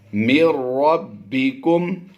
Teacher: وَقُلِ الْحَقُّ مِن رَبِّكُمْ، با پر کلکلہ کبریٰ کرتے ہوئے ہم نے اسے ذرا جماؤں کے ساتھ پڑھنا ہے، مِن رَبِّكُمْ، آپ غور کریں کہ ہم نے جزم والے حرف کے بعد شد والا حرف پڑھا ہے، تو یہاں پر ادغام کا قاعدہ ہوتا ہے لیکن ادغام بلا غنہ ہوگا